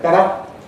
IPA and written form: ˈbeɾə (better)